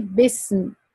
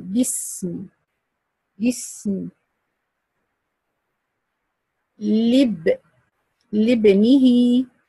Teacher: If I connect it with the letter behind it, I'm going to drop Hamzat al-Wasl. I will not pronounce it at all. The letter preceding Hamzat al-Wasl is directly connected to the letter following Hamzat al-Wasl.